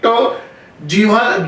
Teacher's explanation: जीभ आपकी ऊपर मुड़ के जाती है, उसे बोलते हैं मूर्धन्य।